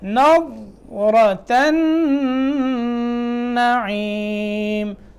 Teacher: تا کو نون سے ملائیں گے، نون میں غنہ کریں گے، نون مشدد ہے